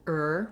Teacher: this is an unstressed er it sounds just like er we still make that tight back american r